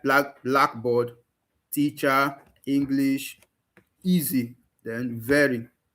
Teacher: they are stressed on the first syllable, that is on the primary syllable.